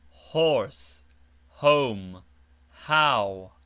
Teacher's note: h well breathed as in horse home how